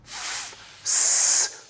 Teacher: when we restrict the flow of air as an F producing a chaotic noisy sound